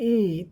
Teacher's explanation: फिर जब ई बोलते हैं, ई, तो जीभ का अग्रभाग उठ जाता है, जो कि एकदम स्पष्ट है।